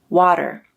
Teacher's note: Americans use a flap in the word water, but British people use a true T.